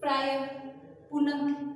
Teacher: विसर्ग मतलब क्या होता है, विसर्ग मतलब आहा की मात्रा होती है, इसकी ध्वनि ह के रूप में प्रयुक्त होती है